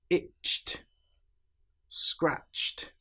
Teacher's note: You will notice in these examples that we don't pronounce the e sound at all. The t is almost like an extra consonant that links directly to the consonant before it. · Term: t sound